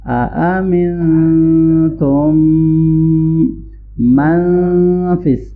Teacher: اَأَمِنْتُمْ، یہ 2 ٹائم حمزہ ہے تو اس کو ہم جلدی سے پڑھیں گے۔ من نون ساکن پہ ہم اخفا کریں گے اور آگے میں جاتے ہوئے غنہ ہوگا